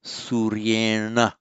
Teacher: the ya does not block the effect of the r on retroflexing the n, so it's Suryena, with a subdotted n, with a retroflex n.